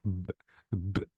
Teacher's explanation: Now try to say B, absolutely there will be vibration, and because there is vibration, B is voiced and P is voiceless.